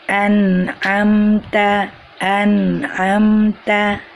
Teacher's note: tetap ada dengungnya cuman pendek dengungnya itu tidak panjangnya begitu juga bila nun sukun itu bertemu dengan huruf huruf halqiyah ataupun huruf-huruf tenggorokan dengungnya juga terdengar pendek